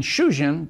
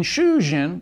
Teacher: the short /u/ phoneme in shujin belongs to the category of short vowels, but the long /uu/ phoneme in shuujin belongs to the category of long vowels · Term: vowel length